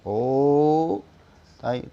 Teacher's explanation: ओ को कहने में हमें तीन मात्राओं के बराबर हमारा समय लग रहा है। ओ, तब जाके हम कहीं म बोल रहे हैं। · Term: प्लुत स्वर